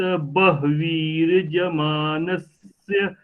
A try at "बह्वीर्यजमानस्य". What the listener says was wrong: हाँ, बहवीर यजमानस्य, य अच्छे से सुनाई नहीं दिया था। बहवीर यजमानस्य पशून पाहि। ठीक है, इसका अभ्यास और कीजिए आप।